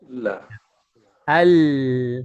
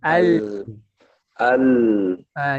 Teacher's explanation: jadi ujung tepi itu menempel ke langit-langit atas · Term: makhraj huruf lam